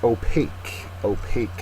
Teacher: second syllable is accented